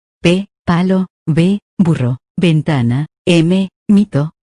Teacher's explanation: Se producen uniendo los labios. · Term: bilabiales